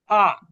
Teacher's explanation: কন্ঠনালীর গোড়া থেকে অর্থাৎ গলার শুরু থেকে। আ একটু অনেকটা একটু ধাক্কার মত কিছুটা। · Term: হামজার জবর